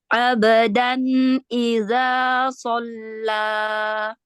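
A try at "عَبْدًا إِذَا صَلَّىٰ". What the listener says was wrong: Ya, tipiskan lagi huruf zal, keluarkan ujung lidah.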